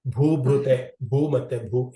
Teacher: ಭೂ ಮತ್ತೆ ಭ ಎರಡು ಕೂಡ ಮಹಾಪ್ರಾಣ ಉಚ್ಚಾರಣೆ ಮಾಡಬೇಕು